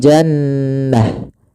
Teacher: dirubah menjadi huruf ha sukun, maka menjadi jannah. Bukan jannat, tapi jannah. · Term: ta marbutah